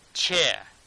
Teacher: r sound is missing, so I'm not pronouncing this r sound